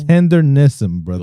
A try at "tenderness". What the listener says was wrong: Tenderness. Where'd the N come from? Tenderness. Where'd the N come from?